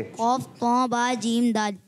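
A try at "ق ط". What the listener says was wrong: ये फिर कौफ तो फिर नाक में चली गई। तो नहीं प्यारे बच्चे, तो क्लियर करें। तो ये सख्ती से पढ़ा जाने वाला हर्फ है।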